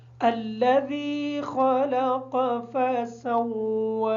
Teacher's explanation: خا کو موٹا پڑھیں گے، قاف کو موٹا پڑھیں گے، سین کو واو کے ساتھ ملاتے وقت تھوڑی سختی اختیار کریں گے تاکہ واو کی شد صحیح طریقے سے ادا ہو جائے